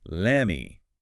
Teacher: The T sound in let often gets dropped or assimilated before the M of me, and the vowel sound in me might weaken slightly. It just flows much more easily as lemmy.